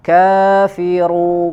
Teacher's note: huruf ro-nya dibaca panjang, ya. Mad arid li sukun 2, 4 atau 6 harokat, ya, disempurnakan dengan huruf terakhirnya, ya.